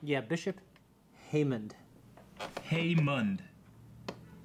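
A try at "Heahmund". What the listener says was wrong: Haymund. So no D in there. Like Haymund.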